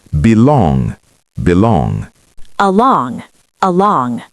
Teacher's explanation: Both have stress on long.